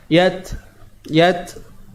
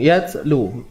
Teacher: bunyi itu namanya sifat hams, iaitu udara yang terlepas, nafas yang terlepas.